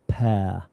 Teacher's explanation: In RP, we generally don't pronounce the R sound much.